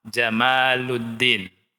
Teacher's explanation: Ingat, kita harus memanjangkan ma.